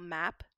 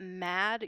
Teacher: example map you'd get that standard a sound map but mad you would get a tensing and raising of the vowel